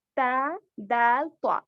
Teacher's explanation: ये जुबान की नोक ऊपर के दांतों के अंदरूनी हिस्से को लगने से अदा होते हैं